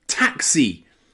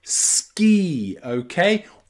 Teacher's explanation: All of these have that long E sound for the letter I.